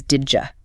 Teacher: It almost always becomes did you. That D and J sound blend together.